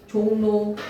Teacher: 리을이 이응 미음이랑 만나서 리을이 니은으로 바뀌는 거야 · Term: 리을 비음화